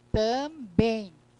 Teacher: Aí você vai dizer assim, mas no final ali, também. O M agora, ó, ele nasaliza, mas ele também tem um som de ditongo. Então, como ontem nós vimos, no final da palavra eu tenho um ditongo nasal.